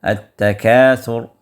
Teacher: را کو جب آپ روک رہے ہیں تو یہ را یہاں پر آپ کو پر پڑھنا ہوگا